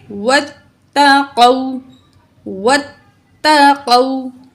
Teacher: واو لین ہوتی ہے، ٹھیک ہے۔ تو واو لین کو کھینچ کے نہیں پڑھتے، اس کو نرمی سے اور جلدی پڑھیں گے